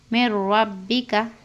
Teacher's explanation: نون ساکن کے بعد را کر ہے، اس لیے بغیر غنہ کے پڑھنا، اور سکون کے بعد تشدید آ کر ہے تو ہم کیا کرنا، سکون والا لفظ سائلنٹ ہو جاتا۔